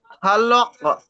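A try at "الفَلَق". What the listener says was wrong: লক নাই, লাক, লাক।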